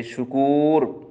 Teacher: تو را کی چوتھی صورت ہے را مرامہ، یعنی جس پر وقف بالروم کیا گیا ہو وہ را اپنی حرکت کے موافق پڑی جائے گی، یعنی پیش کی صورت میں پر پڑی جائے گی